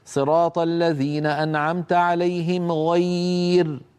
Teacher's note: فيرقق الراء لانها ساكنه وقبلها ياء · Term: ترقيق الراء